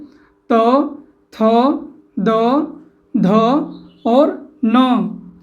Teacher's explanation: जिन वर्णों का उच्चारण करने पर हमारे जीभ का अग्र भाग यानी आगे का भाग ऊपर के दांतों को ठीक है हमारे ऊपर के दांतों को स्पर्श करें उन्हें क्या कहेंगे दंती व्यंजन कहेंगे और दंती व्यंजन के अंतर्गत